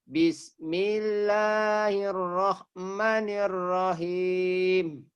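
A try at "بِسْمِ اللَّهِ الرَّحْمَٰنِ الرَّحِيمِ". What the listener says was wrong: Maknya panjang. Maknya panjang.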